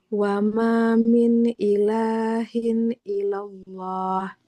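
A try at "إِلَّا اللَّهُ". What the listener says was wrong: Di atas lam ada tanda apa Ibu ini? Nah, bukan ilallah. Illa. Illa. Nah, illallah.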